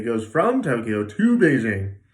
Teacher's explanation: I might say from with a bigger not as reduced vowel